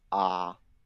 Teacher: It's a very low level tone.